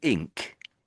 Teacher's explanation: when you're making ink, you are now lifting your tongue at the back, but you're making a k sound this time at the back.